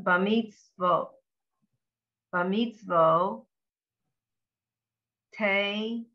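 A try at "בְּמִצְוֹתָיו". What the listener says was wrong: No, that's a, and that's not a nun. That's a vav. Right, b'mitzvot tav.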